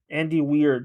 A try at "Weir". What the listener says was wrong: Weir, not weird.